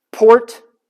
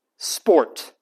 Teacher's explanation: the plosive P the P with a puff behind it and the non-plosive p